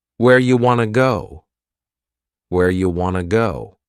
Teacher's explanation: You becomes ya and want to becomes wanna. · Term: reduction